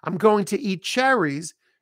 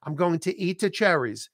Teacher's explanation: Eat cherries, we drop the T.